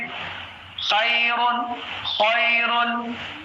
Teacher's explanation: خا جو ہے گلے کے اوپری حصے سے ادا ہوتا ہے. اب خا میں آواز جو ہے، ایک فرق میں آپ کو بتا دوں، خا جب بھی آپ ادا کریں گے خا کی آواز ایک دم ایسے آنی چاہیے جیسے ایک کوے کی آواز آتی ہے.